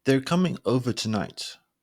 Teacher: that it's the end of the thought they're coming over tonight there's a slightly bigger drop that marks end of the sentence